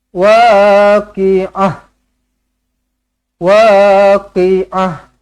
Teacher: Kalau berhenti pada ta marbutah, tukarkan huruf ta marbutah ini menjadi huruf ha.